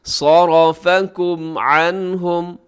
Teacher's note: صاد موٹا، را موٹا، باقی اس میں باریک ہیں۔ صَرَفَكُمْ عَنْهُمْ، عَنْهُمْ نون ساکن کے بعد ہا ہے تو یہاں اظہار حلقی۔